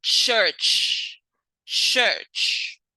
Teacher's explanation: Next, we have ch, ch, which is voiceless, post-alveolar, affricate, such as in church, church.